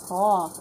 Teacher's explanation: तो यहाँ देखें, गाइन गा, चूँकि हम जानते हैं हरूफ मुस्तालिया हमने पढ़ा है ना, उसमें हमें मिला गाइन। गाइन को मोटा पढ़ेंगे, ठीक है, गा नहीं पढ़ेंगे, गौ भारी आवाज़ में पढ़ेंगे